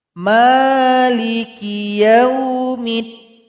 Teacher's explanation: Kemudian di sini juga ada alif lam syamsiyah. Jadi mim yang kasrah langsung diloncatkan kepada huruf dal. · Ada lagi harakat fathah berdiri. Mim dipanjangkan dua harakat.